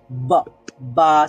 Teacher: দুই ঠোঁট হঠাৎ করে খুলে ফেললে মানে এভাবে সমান বা মানে সমান ভাবে যদি ঠোঁট থাকে এবং হঠাৎ খুলে একটা সাউন্ড প্রডিউস হয় তখন উচ্চারিত হবে